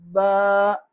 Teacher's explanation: बा आप स्क्रीन पे देख सकते हैं कि बा के अंदर होंठ मिलते हैं, और होंठों का अंदर जो तरी वाला हिस्सा है वो जब मिलता है तो इससे बा अदा होता है, तो इसकी अदायगी होगी बा।